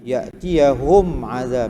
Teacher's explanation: mim mati bertemu dengan ain, situ tak dengunglah. Izhar syafawi, tak apa, tak tahu nama pun tak apa, yang penting baca betul.